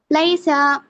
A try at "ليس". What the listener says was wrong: سا، سا نہیں، لیسا بس، لیسا زبر کو کھینچنا لیسا.